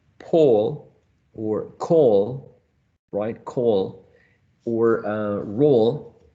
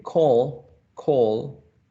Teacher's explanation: the tongue goes a little bit backwards so it's not the same quality